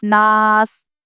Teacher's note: یہ جزم والا حرف حروف قلقلہ میں سے نہیں ہے، اس لیے ہم یہاں پر قلقلہ بھی نہیں کریں گے، صرف ناس ایسے رک جائیں گے، ناس ایسی آواز نہ لائیں۔